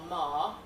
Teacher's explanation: And it is, we can read from this, a voiced bilabial nasal.